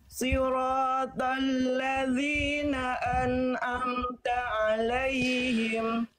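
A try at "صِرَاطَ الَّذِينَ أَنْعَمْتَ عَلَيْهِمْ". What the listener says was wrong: Ainnya kuatkan pada bagian an'am. Ainnya kurang kuat. Siratal ladzina an'amta alaihim.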